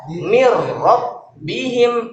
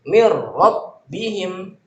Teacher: Inilah idgham masuk tapi nggak pakai guna, nggak pakai dengung, nggak pakai lewat hidung.